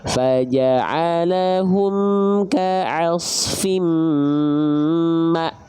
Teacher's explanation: Makanya lihat ya, ketika hamzah bersukun, huruf-huruf yang berjumpa dengan hamzah sukun itu akan terhenti, seolah terhentak, kayak ada remnya. · Karena hamzah sukun punya sifat syiddah, punya sifat tertahan suara.